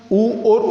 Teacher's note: ऊ और ऊ यानी दोनों होठ की सहायता से उच्चारित हो रहे हैं। दोनों का आकार गोलाकार, वृत्ताकार